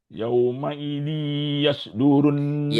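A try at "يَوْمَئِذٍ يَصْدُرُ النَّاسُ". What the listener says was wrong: Yauma idzi, ketika baca zi itu masukkan suara ke hidung. Yauma idzi yasdurun nasu.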